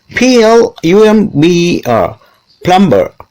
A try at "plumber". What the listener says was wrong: See, most people say plumber because B is there. Actually, plumber is wrong. Like that B there, it should be silent. It should not be heard. Instead, say plumber.